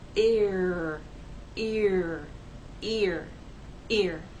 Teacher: take the first vowel sound and glide in to the r sound